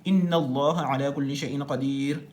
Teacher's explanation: د الله د نوم کې چې کوم لام دی د دې لام نه مخکې زبر راغلی دی، نو دلته د الله د نوم دا چې کوم لام دی دا به پور ویل کېږي، دا به موټه ویل کېږي.